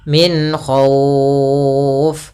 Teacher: ada bacaan izhar nah izhar di sini adalah izhar halqi yaitu suara nunnya kita baca dengan jelas tanpa ditahan karena datang setelah huruf nun ada huruf k yang di mana